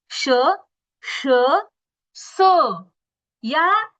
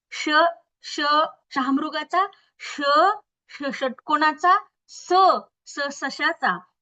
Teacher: जेव्हा श, श आणि स हा उच्चार तुम्ही करता, तेव्हा एक प्रकारे घर्षण होतं आणि उष्णता निर्माण होते. त्यामुळे त्यांना उष्मे किंवा घर्षक असं म्हणतात.